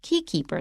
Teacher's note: this is a compound noun they are both nouns key and keeper so we don't stress keeper key keeper the sistine chapel key keeper our first sentence of